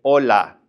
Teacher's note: We don't pronounce the H whatsoever